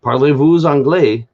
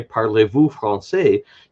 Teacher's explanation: you don't pronounce that S on the end of the word vous.